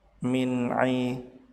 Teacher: nun sukun bertemu dengan ain dibaca jelas disebut sebagai idhar halqi, sebab nun sukun bertemu dengan huruf tenggorokan yaitu ain.